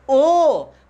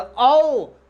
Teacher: बोलिएगा ओ, फिर बोलिएगा औ तो देखिए आगे मुंह आपका गोला होता है, वृत्त के शेप में होता है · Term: वृत्ताकार